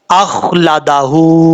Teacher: خا پر پڑھا جائے گا، حروف مستعلیہ میں سے ہے، اور قلقلے سے بچنا ہے، اخ لادا نہیں پڑھنا، اخ لادا، اس طریقے سے۔